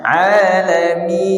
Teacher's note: Mi itu huruf mad. Jadi huruf mad tidak keluar dari hidung, bukan min, bukan gitu.